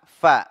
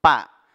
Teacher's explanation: basah bibir bawah bertemu dengan ujung dua gigi seri atas ini huruf fa fa Bukan PA bukan dua bibir disatukan